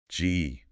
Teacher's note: This is a guttural sound. Comes from the back of the throat.